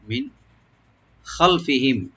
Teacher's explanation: নুন সাকিন এখানে আমরা জাহার করবো, এখানে গুণ হবে না